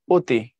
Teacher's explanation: অ কখনো কখনো ও এর মতো উচ্চারিত হয়, তখন তাকে বলা হয় অধ্বনির সংবৃত উচ্চারণ।